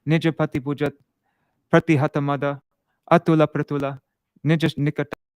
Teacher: it starts off with 6 short syllables. And with short syllables, we pronounce them very quickly.